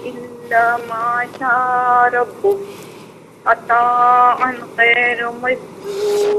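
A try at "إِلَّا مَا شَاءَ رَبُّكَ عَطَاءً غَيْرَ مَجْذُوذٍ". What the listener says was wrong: ماشاءاللہ، باقی آپ نے صحیح پڑھا۔ ما شاء، اس کو ذرا کھینچنا ہے اور آ کو وضاحت سے پڑھنا ہے۔ عطاء غیر نہیں ہے، غیر مجذوذ۔ بہت بہت شکریہ۔ السلام علیکم۔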